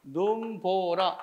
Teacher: 첫 음절에 있을 때 결국 눈은 길게 소리 나는 것